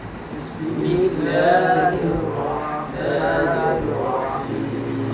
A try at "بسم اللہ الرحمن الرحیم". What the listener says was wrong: آپ الف کو لمبا کر رہے ہیں۔ بسم اللہ الرحمن الرحیم،